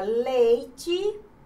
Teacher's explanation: observe que ei está na mesma sílaba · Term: ditongo